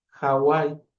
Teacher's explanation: esta pronunciación de la H era como pronunciar la J, pero en un aspecto más débil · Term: aspiración de la H